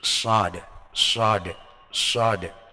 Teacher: Jadi shad, shad, shad, dengan mengangkat lidahnya, punggung lidah, bukan ujung lidah, punggung lidah. Jadi menyempitkan jalur rongga udara. Akhirnya menimbulkan bunyi yang siul.